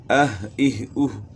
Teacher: ہا اقصی حلق سے ادا ہوگی گلے کے آخر سے